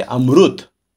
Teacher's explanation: इसका उच्चारण दक्षिण वाले, उड़ीसा वाले, मुंबई वाले क्या करेंगे, रू की तरह करेंगे